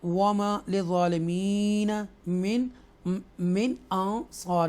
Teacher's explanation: نون ساکنہ کے بعد حروف حلقیہ میں سے تھروٹل لیٹر میں سے حمزہ ہے، تو اس لیے ہم اس کو نون کی آواز کو کلیئر پڑھیں گے، اظہار کریں گے یہاں پر۔